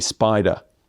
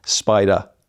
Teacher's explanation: that word in British English doesn't end in R. It ends in schwa.